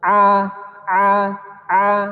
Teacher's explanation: misalnya masih tertahan di hidup a-a-a-a maka airnya masih belum tepat jadi harus dia keluarnya dari mulut tidak boleh dari hidung